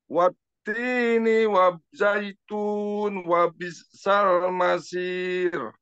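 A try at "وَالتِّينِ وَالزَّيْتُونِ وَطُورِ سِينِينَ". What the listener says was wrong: Ni-nya ketinggalan Pak. Zaituni. Nah, ni-nya ketinggalan tadi.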